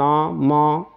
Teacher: आप उच्चारण करोगे तो बिना नाक की सहायता से आप नहीं बोल पाओगे नाक को बंद करके देख लेना आप नहीं बोल पाओगे तो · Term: नासिक्य